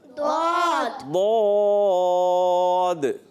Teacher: اس کا اپنا تلفظ ہے، حافۃ اللسان اضراس الیاء کی جڑیں، اوپر کی داڑھوں کی جڑیں. جب زبان کا بغلی کنارہ اوپر کی داڑھوں کی جڑوں سے لگتا ہے تو یہ ادا ہوتا ہے